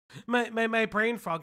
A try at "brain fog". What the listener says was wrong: frog, brain fog. You're saying brain frog.